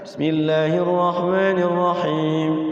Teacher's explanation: mad ardi sukunnya tidak terlalu panjang. Jadi kayak disenggolin, tek tek tek tek.